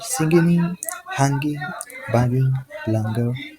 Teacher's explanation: The end sound is a velar nasal made by touching the back of the tongue to the soft palate. The sound never appears at the beginning of English words.